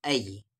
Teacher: یا ساکن ہے اور یا ساکن سے پہلے زبر ہے تو ای ساؤنڈ ہوگا